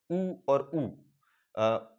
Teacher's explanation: होठों को गोलाकार करके ऊ और ऊ की ध्वनि निकलती है, मतलब जो ऊ और ऊ है वो ओष्ठीय व्यंजन, ओष्ठीय स्वर होते हैं, ओष्ठ के अंतर्गत आते हैं ऊ ऊ।